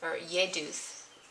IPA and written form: jɛduθ (jeyduth)